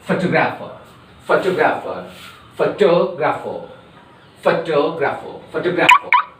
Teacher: And again there will be stress on to.